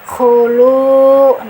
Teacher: karena ada dhammah bertemu dengan waw, panjangnya 2 harokat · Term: mad tabi'i